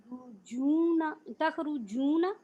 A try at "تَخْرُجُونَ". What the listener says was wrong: را کے اوپر رو کہنا ہے آپ نے رو.